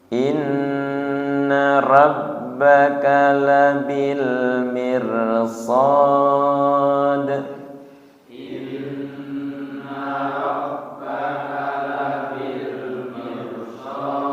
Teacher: mirnya enteng, mir tidak miu.